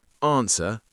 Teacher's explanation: I don't pronounce the W and I don't pronounce the R in my modern RP accent. I don't normally pronounce the letter R unless it's followed by a vowel sound.